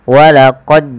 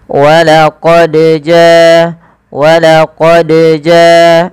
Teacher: nah itu juga salah dan tidak tepat sehingga yang tepat Bagaimana yang tepat adalah dia kita pantulkan suaranya sembari mengalir suaranya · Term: huruf Qalqalah